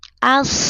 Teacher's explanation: Dari A langsung tekan di huruf shod. Lamnya diabaikan ya. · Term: Alif lam samsia